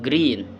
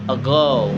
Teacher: G is voice, velar, and plosive, same as K, but with vocal cords vibrating